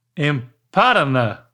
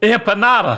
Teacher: The emphasis is on the NA.